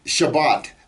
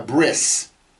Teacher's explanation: certain sects of Jews who pronounce the T sound at the end of a word as an S. You'll hear it in Shabbat.